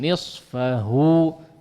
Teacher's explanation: betul-betul dikeluarkan huruf ha-nya dari al-jauf ya, khususnya madnya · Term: hu khalis minal jauf